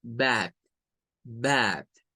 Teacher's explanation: Ahora, la palabra bath, nótese que comienza con una B, luego tiene una A que suena con el AE, es un sonido corto, y luego tiene una TH sin vibración al final